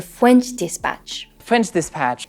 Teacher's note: that is the way that he pronounces the letter ah and he pronounces this sound in a kind of a little bit like a w it's not like like a true W but it's not an R it's somewhere in the middle